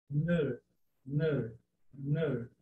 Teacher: É uma vogal retroflexo. Então, ele tem sempre que enrolar um pouquinho a língua.